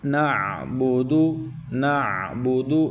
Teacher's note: نعبد، نعبد، نون کے بعد عین ہے، عین کو حلق کے درمیان سے مکمل ادا کرنا ہے۔ اور نعبد، دال کو عمومی جو غلطی ہوتی ہے وہ دال کو بعض دوست واو مدہ کی طرح پڑھ کے اس کو کھینچتے ہیں، تو یہ دال کے اوپر پڑی حرکت میں پیش ہے، تو اس کو بغیر کھینچے پڑھنا ہے۔